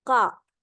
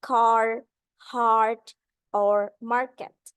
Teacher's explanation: In British English, when R comes after a vowel in the same syllable as in car, heart, or market, the R is not pronounced. Car. In American English, the R is pronounced.